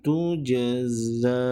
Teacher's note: Ketika ia wakaf, hanya perlu dibaca dengan kadar 2 harakat, walaupun ia ada tanda panjang di sini.